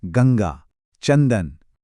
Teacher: अनुस्वार एक नासिक्य व्यंजन ध्वनि है। मतलब इसकी आवाज पूरी तरह 100% नाक से आती है।